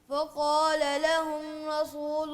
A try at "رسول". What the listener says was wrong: دوبارہ آرام سے تسلی سے. را کو پر کریں. را کو پر کریں.